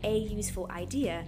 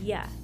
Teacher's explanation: Even though useful begins with the letter U, it's pronounced with the consonant y sound, which requires the article a.